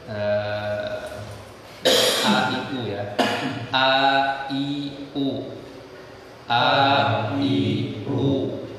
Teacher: di tenggorokan bagian bawah atau lebih tepatnya di pita suara kita